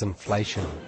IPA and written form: ɪnˋfleʃən (inflation)